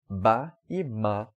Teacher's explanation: E, por exemplo, ba e ma, do Chaibmat, as duas também são realizadas no mesmo local, são consoantes bilabiais, são feitas com os dois lábios.